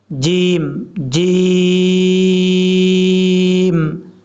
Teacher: زبان کا درمیان اوپر والے تعلق سے لگے گا تو جیم پڑھا جائے گا۔ اب کچھ لوگ اس کو زور دے کے پڑھتے ہیں جیم، یہ غلط طریقہ ہے، ایسا نہیں کرنا، نارمل طریقے سے پڑھنا ہے، جیم، جیم۔